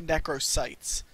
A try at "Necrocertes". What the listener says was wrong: No, it's Necrocertes, because there's always that R I see. Necrocertes.